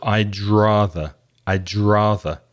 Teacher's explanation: The D of I'd and the R of rather come together.